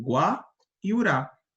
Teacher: Nós temos duas sílabas átonas nós temos aqui o gua e o raá por quê Porque elas não têm tanta ênfase quanto a sílaba tônica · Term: sílaba átona